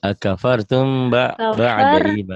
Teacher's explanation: memang nanti ketemu ba itu ikhfa syafawi. Jadi kafartum gitu ya, bindeng.